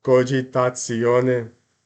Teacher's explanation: I'm putting a little bit of an S between the T and the I